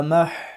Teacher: حروف حلقی میں سے ہے حا حلق سے ادا کریں گے